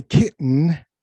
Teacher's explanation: no because the rule of our language turns that those double T's into a glottal stop so you're when you say kitten you're using your glottis and